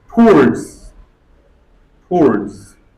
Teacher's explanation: Third pronunciation, O and W both of them become silent.